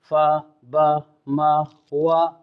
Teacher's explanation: شفویہ ہونٹوں سے ادا ہونے والے حروف